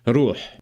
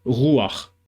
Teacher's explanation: The rolled R sound became a guttural R sound, more like in French or German.